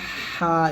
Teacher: এই যে হাটা আমরা গলার মাঝখান থেকে নিয়ে আসবো